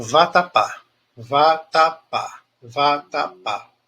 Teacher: pá é a sílaba tônica tá no degrau mais alto